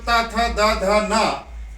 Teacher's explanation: ट वर्ग मूर्धन दंत ता वर्ग। ता वर्ग में जो ता था दा धा ना, ये दंत वर्ण में आता है।